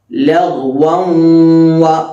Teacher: തൊണ്ടയുടെ തുടക്ക ഭാഗത്ത് നിന്നാണ് ഗൈൻ പുറപ്പെടുക.